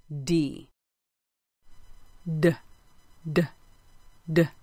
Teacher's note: air and they'll be a small dull sound of d d there was a little bulging of the vocal cords and a vibration · just a little air and say just the sound of d there'll be a teeny little release of air and they'll be a small dull sound of d · engage my vocal cords i place my fingers on my throat i put the tip of my tongue on the roof of my mouth close to the teeth but not touching them i use my vocal cords and release with just a little air · to make d i need to engage my vocal cords